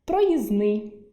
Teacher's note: у слові проїзний повинен був лишитися «д» від слова «проїзд», але працює наше допінг-правило спрощення, тобто зменшення кількості елементів, і «д» випадає